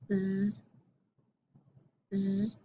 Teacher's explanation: So it's an S, but it's a voiced S